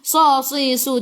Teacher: Sa si su tebal. Sifat hurufnya itbaq.